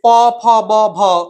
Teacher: প ফ ব ভ উচ্চারণ করার সময় একটা ঠোঁট উপরের ঠোঁটকে, অর্থাৎ ঠোঁট এবং অধর বা বলতে পারে একটি ঠোঁট অপর ঠোঁটকে স্পর্শ করে বলে এই বর্ণগুলিকে বলা, এই স্পর্শ করে বলে একে বলা হয় ওষ্ঠধ্বনি।